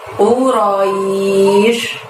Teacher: U-nya di situ pakai qaf doma, maka keluarkan U dari pangkal lidahmu hingga menyentuh langit-langit.